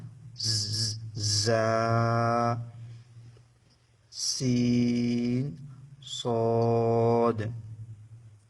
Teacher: সফিরিয়া অর্থাৎ চড়ই পাখির অক্ষর চড় পাখিকে যেমন কিসকিস শব্দ করে এ অক্ষর তিনটা উচ্চারণ করার সময় কিস কিস শব্দ বাইর হবে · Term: হরুফে সফিরিয়া